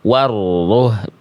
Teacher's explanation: Tasdid itu hurufnya dibaca ditekan atau banyak orang bilang jadi double. Intinya ditekan rohnya.